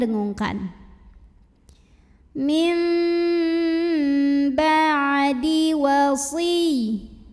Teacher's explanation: bukan min tapi mim dan dengungkan